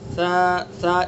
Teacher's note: سا کا مخرج زبان کی نوک ثنا علیہ کا کنارہ، سا۔ اس کے اندر ذرا بھی سیٹی کی آواز نہیں آئے گی۔